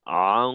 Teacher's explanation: তো এখানে আং আনা বলে আং অর্থাৎ গুন্না চলাকালীন সময়ে হদের মাখরাজে অবস্থান করব >> এবং জিওভার গোড়া জিওভার মধ্যখান এইটা ঊর্ধ্মুখে রাখতে হবে যাতে করে গুন্নার আওয়াজটাও মোটা হয় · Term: গুন্নাও মোটা